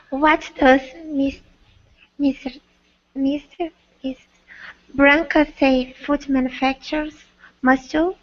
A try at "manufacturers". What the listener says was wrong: Manufacturers. We have an extra syllable in there. Repeat. Manufacturers.